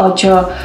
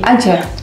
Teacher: jadi vokal a tetap diucapin a Enggak berubah jadi O